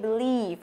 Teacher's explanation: cái âm thứ hai này nó đọc là âm y dài. Thế cho nên khi mà chúng ta đọc thì chúng ta phải nhớ là miệng của chúng ta nó căng ra.